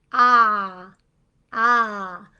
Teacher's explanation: Ah is just said with an open mouth. Ah, and your tongue is low in your mouth and your jaw opens.